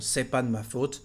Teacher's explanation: it's possible to not say the first part of the negation, the N apostrophe, and just say franchement, c'est pas de ma faute